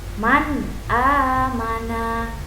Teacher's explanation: cara membacanya harus jelas tanpa mendengung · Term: ijhar